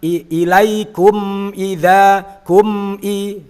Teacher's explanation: Secara bacaan kan idhar syafawi, tapi saat praktek gunnahnya juga harus tetap ada walaupun minim, karena di situ juga ada sifat tawassutnya yang harus terjaga.